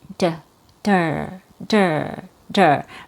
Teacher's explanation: That's your stressed syllable. The weak syllable has a fast D sound.